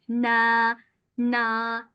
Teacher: E yumuşatarak okuyorsunuz. A e arası bir sesle.